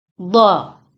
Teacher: ini merupakan mad iwad yang diwakafkan. Jadi dibacanya dha, jangan dibaca don.